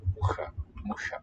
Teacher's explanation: The ch sounds palatal there.